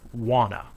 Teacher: words want and two both have the sound want to but when we blend the words together the t sound is lost